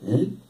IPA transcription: l